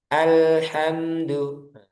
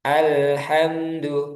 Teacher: Karena lam dia sifatnya bainiyah, pertengahan. Alhamdu ngalir tapi cuma sebentar ngalirnya.